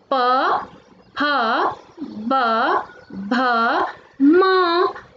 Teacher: दोनों होठों को जोड़कर बोलनी है